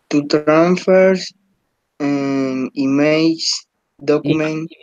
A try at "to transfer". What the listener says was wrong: And remember, Fabio, try to don't read or don't pronounce letters that doesn't exist on the word. For example, here there is not an S. So you have to say to transfer, not to transfers, because there is no S here.